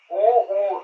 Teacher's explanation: उ, इसका उच्चारण स्थान ओष्ठ होता है